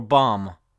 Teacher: B-O-M-B is just pronounced bomb, not bomb. The B is completely silent.